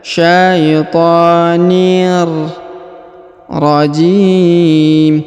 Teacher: huruf tanwin in bertemu dengan ro bertasdid, maka kita langsung sambung masuk ke huruf ro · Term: leburkan